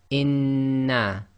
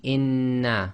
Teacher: going to do this germination which means we've got to effectively merge the two noons together and hold it for a little bit · you pronounce the first noon sakin, and then the sound of the second noon comes directly out without taking a pause or breaking the sound. So it'll be inna. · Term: gemination